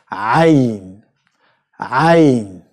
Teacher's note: it comes from the very back end of your mouth. The four letters, the hardest letters in Arabic, all of them comes from the velum of your mouth, the very, very back end of your mouth.